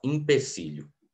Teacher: A sílaba tônica está no I, né? E aí é natural que as vogais que sejam átonas às vezes se reduzam, né? Então é comum que um E vire um I. E aí a gente fala empecilho.